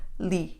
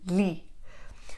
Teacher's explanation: li is from the back of your throat. It's not from the tip of your tongue.